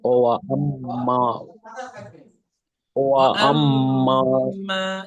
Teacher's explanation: মিমটা গুন্নাও হবে, ও একালিফ টানও হবে